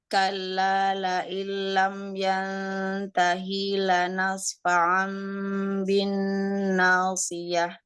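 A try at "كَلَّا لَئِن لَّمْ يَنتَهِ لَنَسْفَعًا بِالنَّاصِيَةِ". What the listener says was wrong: Yang tahinya, hinya nggak ada mat.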